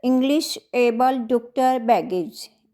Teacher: इनके ऊपर जो पहला हमारा फर्स्ट सिलेबल है उसके ऊपर स्ट्रेस है